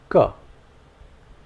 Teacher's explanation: Try saying this while releasing as little air as possible. There should be no unnecessary gush of air along with this sound.